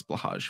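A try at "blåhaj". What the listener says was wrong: OMG, Hodge is so much better pronounced than Hadge. Blah Hodge.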